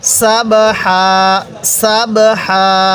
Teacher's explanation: হাটা উচ্চারণের সময় মুখ দিয়ে হালকা বাতাস বের করব